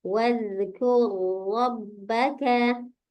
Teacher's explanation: jangan terlalu banyak takrirnya atau getarnya ya